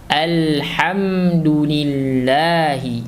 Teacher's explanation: maka kita berikan makhrojnya pada huruf H di tengah tenggorokan